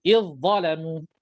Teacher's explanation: Kemudian zal ada sifat rakhawah, sifat melepaskan suara, ya, tetapi dha tebal pula, ya, dha sifat rakhawah juga tetapi dalam keadaan isti'la